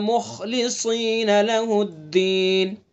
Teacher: خا کا مخرج ادنائے حلق، ادنائے حلق یعنی منہ کی طرف سے، اور پر بھی پڑھیں گے اس کو، اور آگے صاد اس کو بھی پر پڑھیں گے.